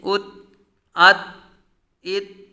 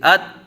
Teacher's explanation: تا ساکن کو پڑھا ہے تو تا کو ادا کرتے ہی آواز ختم ہو جاتی ہے، آواز کو قلقلہ نہیں کریں گے